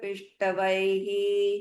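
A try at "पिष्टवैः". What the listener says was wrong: No, not Pish. Pissa again. Sa. A snake. That's Sa.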